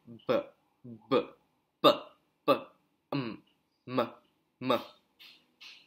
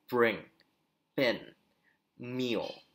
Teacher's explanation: This voice is produced by touching your two lips to obstruct the voice, to obstruct the airflow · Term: bilabial